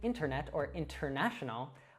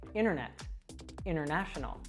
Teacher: we'll actually drop the t- sound many times